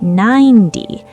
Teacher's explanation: The T in 90 is between two vowels, so we say 9D, 90. Listen, 9T, 90. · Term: soft D